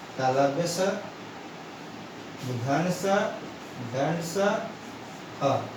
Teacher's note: उष्मा व्यंजन इन वर्ण का उच्चारण करते समय हवा के रगड़ खाने से एक प्रकार की उष्मा सी उत्पन्न होता है, वे होते हैं उष्मा व्यंजन।